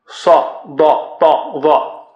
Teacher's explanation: یہ 4 حروف صاد ضاد طا ظا یہ موٹے اور اونچے, بہت موٹے اور اونچے حروف ہیں